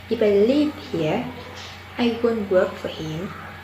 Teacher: the tone rises in clause and falls gradually in main clause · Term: Conditional sentence